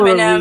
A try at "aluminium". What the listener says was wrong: It's aluminium. Aluminium. Yeah, the vowels are there for a reason. Not so that you can just ignore them like they don't exist.